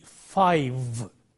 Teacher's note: initially there is no voicing it is a voiceless sound and finally it is a voice sound